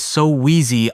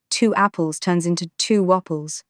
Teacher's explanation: When you have 2 vowels next to each other, the mouth naturally slides in a Y or wah to fill the gap. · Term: glide